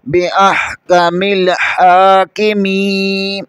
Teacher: میم زیر کے آگے یا مدہ ہے، اسے الف کے برابر کھینچیں گے